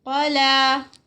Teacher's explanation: قا heavy, لا 2 counts